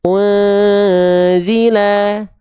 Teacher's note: Tadi di sini ada ikhfa nun sukun bertemu dengan zai ikhfa hakiki. Ya, artinya dia dibaca samarkan, dengungkan, ditahan dua harakat.